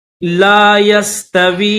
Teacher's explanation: उलाइका, उलाइका हुमुल फासिकून, ला यस्तवी, واو کو یا کے ساتھ ملائیں گے، واو یا زیر وی، یا کے اوپر جو ہے وہ جزم بھی ہے اور چھوٹی مد بھی ہے تو اس کو کھینچیں گے تھوڑا